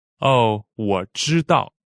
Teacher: 知 is first tone and 道 is fourth tone.